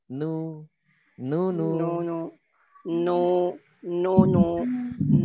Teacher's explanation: ketika dhammah dia monyong tidak membulat. Nu. Ujung bibir tidak bergetar ya.